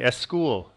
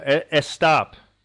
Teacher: They can't start out a word with the S because it doesn't happen in their language. So they have to put the E.